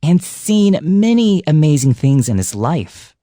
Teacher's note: Many and amazing were also elongated and risen up so that you could emphasize just how amazing these things were.